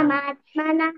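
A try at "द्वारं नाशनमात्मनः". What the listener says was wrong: ద్వారం నాశన, మాశన కాదు. ఓకే, ద్వారం నాశనం ఆత్మనః.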